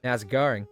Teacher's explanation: That's how you say how's it going with an Australian accent. There's a very very subtle R right in the middle.